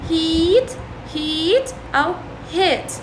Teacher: we talk about high front vowels because the sound is made with the front part of the tongue in a raised position.